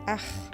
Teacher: c'est la partie de la langue la plus profonde qui vibre, près de la luette